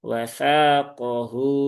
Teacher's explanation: Tsaqohu ini tsa lagi dibaca panjang dua harakat.